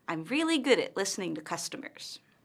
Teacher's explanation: Notice how her intonation falls at the end of the statement. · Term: Falling intonation